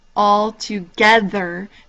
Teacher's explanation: the geth part is kind of the key one that you put emphasis on